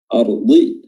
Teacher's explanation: huruf dhad makhrajnya adalah hafatul lisan atau sisi lidah, tepi lidah bertemu dengan gigi geraham atas, baik itu kiri ataupun kanan, ya, atau dua-duanya juga bisa, ya.